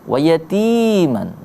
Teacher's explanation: ti-nya juga dibaca panjang sama kayak ki dalam kata miskinan, sama-sama mad tabi'i